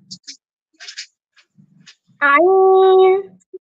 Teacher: হামজাটা পাতলা করে হবে, আইনটা একটু আওয়াজকে চাপিয়ে হবে।